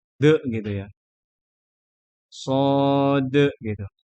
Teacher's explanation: Dan untuk dal di situ ada qalqalah. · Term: Qalqalah kubro